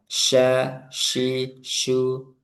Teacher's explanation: Jadi dia tengah lidah dan udaranya menyebar di sekitar makhrajnya di tengah lidah. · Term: tafasi, shin